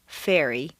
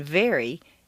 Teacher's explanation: Although F and V are in exactly the same position, F is a hiss and V is a buzz. The V is the voiced pair of F, as you saw in Chapter 2.